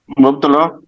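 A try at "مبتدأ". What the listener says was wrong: मुब्तदा। मुब्तदा। हाँ, ये लाम लग रहा है आपको?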